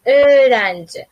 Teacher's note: o ni cho'zib aytyapsiz.